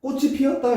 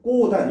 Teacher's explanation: 그러니까 아무런 음운 변동 현상이 나타나지 않은 거야. 근데 꼬단 같은 경우에는 이 치읓이 뭘로 바뀌었어? 디귿으로 바뀌고 연음이 된 거죠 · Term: 음절의 끝소리 규칙